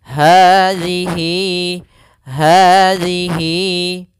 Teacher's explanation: Ini panjangnya huruf hi kita panjangkan sepanjang 2 harokat. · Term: mad silah qasirah